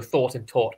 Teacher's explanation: th sounds in Dutch don't exist so thought and taught are often pronounced the same